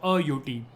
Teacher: it will be a UT because U is pronounced as a consonant, y sound